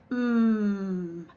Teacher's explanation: that's a vibrating sound if you place your fingers here you can feel it vibrate it's also a longer sound